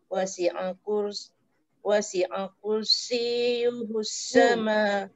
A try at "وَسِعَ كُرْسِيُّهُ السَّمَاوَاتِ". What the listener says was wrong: وسع كرسي jangan masuk sin cepat sangat.